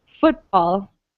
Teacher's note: we stress the first syllable of football